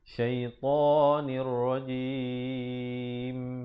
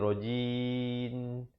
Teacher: Dan ditutupkan rapat mulut, menyempurnakan bunyi mim. Kalau tidak jadi rajin dengan macam huruf nun, itu salah ya, dia mestilah rajim.